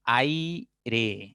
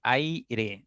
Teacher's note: Decreciente se puede armar con la unión de las vocales A, I, ay, ¿no? Fíjate, la A es abierta y la I es cerrada, es decir, va de abriendo tu boca a cerrar tu boca. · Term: diptongo de tipo decreciente